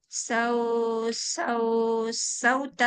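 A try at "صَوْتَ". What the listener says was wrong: Sauta. Jangan banyak sau-saunya jadi confuse. Pendekkan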